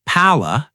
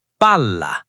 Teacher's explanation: Hold that consonant. Give it an extra beat of tension. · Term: double consonants